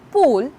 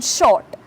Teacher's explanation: vowels like U as in pool and O as in short have rounded lip position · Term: rounded vowels